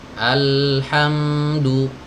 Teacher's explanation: jadi huruf lam dan mim ini harus dialirkan karena keduanya memiliki sifat tawassut atau bainiyah.